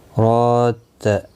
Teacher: را کے اوپر کھڑی زبر ہے، ایک الف کی مقدار کے برابر کھینچ کر پڑھیں گے